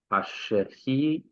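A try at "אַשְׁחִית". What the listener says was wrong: Yeah, the patach is a short vowel, so the shava has to be silent.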